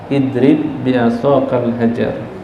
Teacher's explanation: idrib bi'asakal hajar itu enggak perlu diqalqalah karena idgham langsung masuk ke huruf ba yang kedua.